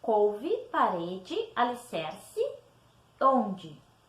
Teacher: O som modifica. Eu escrevo com E, mas eu pronuncio com som de I.